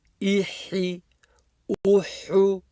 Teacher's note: smiling on the Kasra, and on the Dhamma, making my lips round.